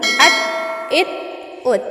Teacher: ता हमारा क़लक़ला नहीं है इसलिए उसमें आवाज़ ईको नहीं होगी